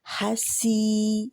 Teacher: या मदिया से पहले ज़ेर आ रही है तो हसी, सी दो हरकत के बराबर खींचेंगे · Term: मद असली